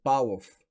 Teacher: в е звучен но се чува като ф беззвучен